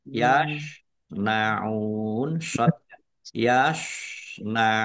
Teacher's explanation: Tetapi karena bertemu dengan huruf terakhir yang dibaca sukun karena waqaf maka menjadi mad arid lisukun. Dibaca panjang boleh 6 atau dua harakat.